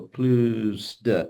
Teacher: the S will typically sound to your ears like a Z, mainly because it's just being pushed on to the next syllable, plus de. Okay.